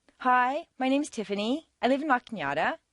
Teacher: A certain segment of the population uses rising staircases, generally teenagers on their way to the shopping mall.